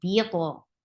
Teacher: For kasra, give E sound, attached with to. To will get qalqala, and it is heavy too.